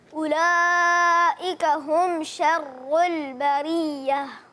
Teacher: اولئک کی مد کو پورا کریں اور بریہ میں را باریک، اس کے بعد آخر میں ہا کی ادائیگی.